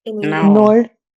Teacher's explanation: So, when two vowels are together, even in, you probably pick a word in English or you pick a word in French, generally what happens is we give more emphasis to the first vowel